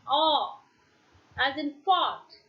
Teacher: Then we find it is open rounded